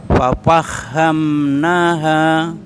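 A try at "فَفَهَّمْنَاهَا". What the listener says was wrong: Agak bawah Pak suaranya. Fafahamnaha.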